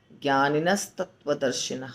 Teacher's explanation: जो उसका अनुस्वार है वह समाप्त हो जाएगा स आ जाएगा उसके बीच में